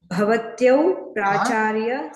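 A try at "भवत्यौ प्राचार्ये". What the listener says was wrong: కొంచెం పొడుగ్గా అనాలి, ప్రాచార్య అనకూడదు. ఆకారాంత స్త్రీలింగ శబ్దం ఇది. అది ప్రాచార్య అనేది పుల్లింగ శబ్దం అవుతుంది. రెండు శబ్దాలు ఉంటాయి, అందుకే కొంచెం ప్రాచార్య అంటే విసర్గతో కలిపి పలికినట్టే లెక్క పుల్లింగ శబ్దం అవుతుంది. అది ప్రాచార్య అంటే స్త్రీలింగ శబ్దం.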